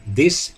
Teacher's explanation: For example, he used DH or D to represent the voiced dental fricative th, as in the English word this